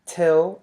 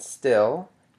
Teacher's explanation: To sort of give you a fun contrast of the aspirated and unaspirated voiceless alveolar stops, if you say till and still, you'll notice that in the word till, you'll feel a stream of air, which means that that is aspirated because it is in syllable initial position. However, in the word still, you will not feel that stream of air anymore because it is now it's following a voiceless alveolar fricative, thus.